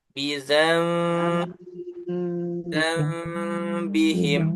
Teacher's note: Nun sukun bertemu ba. Maka ini bacanya ditahan dan samar-samar. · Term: gunnah